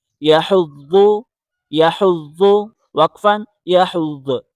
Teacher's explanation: یا زبر یا حا کو ضاد کے ساتھ ملائیں حا کو حلق سے نکالیں ضاد کو زبان کی کروٹ بائیں یا دائیں طرف لگا کے پڑھیں سختی کے ساتھ پڑھیں